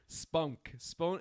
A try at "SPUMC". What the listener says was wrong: No, you wouldn't say spunk. it sounds like you're saying an N rather than an M. You would just say SPUMC. no one ever says spunk.